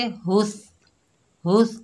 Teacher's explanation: हा के ऊपर पेश है, आगे ता साकिन है, हा को ता से मिलाएंगे, हा को सीने से अदा करेंगे, था को नरमी से अदा करेंगे।